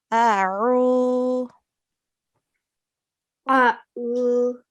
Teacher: We recite the ayn from our throat.